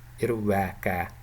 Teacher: Okay, one example would be irwehe, which in Half Mongolian means butterfly, irwehe, and in Western Mongolian dialects we have irwaka. Typically they pronounce it as irwaka with two long A sounds.